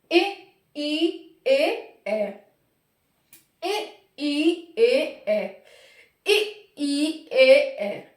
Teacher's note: अग्र का मतलब इनके उच्चारण में हमारी जीभ आगे को उठेगी। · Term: अग्रस्वर